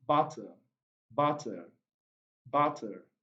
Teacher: the sound itself is a central vowel sound